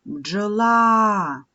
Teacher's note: В слові бджола два голосних звуки. Отже, буде два склади. Бджола. Наголошений склад другий.